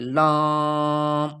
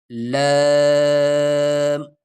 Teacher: لام، زبان سے، منہ سے، موت سے ادا کریں، یعنی اس میں ناک کی طرف آواز نہ لیجیے